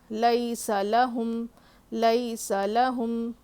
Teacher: میم ساکن کے بعد با اور میم کے علاوہ دوسرا کوئی بھی لیٹر آ جاتا ہے تو وہاں پہ ہم میم کو ظاہر کر کے پڑھیں گے، غنہ نہیں کرنا ہے یہاں پہ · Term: اظہار شفوی